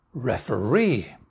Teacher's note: the answer is referee main stress at the end